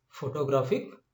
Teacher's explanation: graph is accentuated and not the rest of the three ones